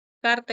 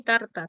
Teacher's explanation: Tenías la oclusiva velar y tenías la oclusiva dental.